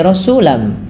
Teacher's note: Apa yang dimasukkan adalah bunyi suara tanwinnya kepada huruf setelahnya. Rasulan menjadi rasulam, sehingga terdengar bunyi suara huruf mim. Langkah kedua, karena ia bi gunnah disertai dengan gunnah, maka perlu ada penahanannya. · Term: idgham